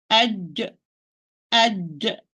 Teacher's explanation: I pronounce the jim sakina and with qalqala by parting the middle part of the tongue and the upper palate